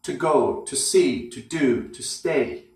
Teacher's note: We often find to plus verb, that to plus infinitive form. That to word is always weak. It's usually not stressed and very short.